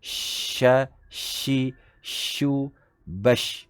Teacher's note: Dan shin mempunyai satu sifat tunggal, iaitu tafashi, iaitu menyembur. Bunyi seakan-akan menyembur.